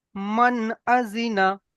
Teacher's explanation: দেখেন মিম সাকিনের পরে হুরুফে হালকি 6টি অক্ষরের মধ্যে হামজা এসছে, তাই নুন সাকিনের পড়াকে বিনা গুণনায় জাহির করে তাড়াতাড়ি পড়তে হবে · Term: ইজহার